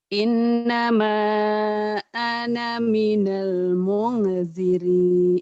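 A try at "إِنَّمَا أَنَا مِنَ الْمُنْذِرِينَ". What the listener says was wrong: Munzirin, ini ro. Di kalian itu kadang-kadang ada titiknya. Itu enggak ada. Munzirin. Titiknya hilangin. Titiknya hilangin. Enggak ada titiknya di situ ya. Innama ana minal munzirin.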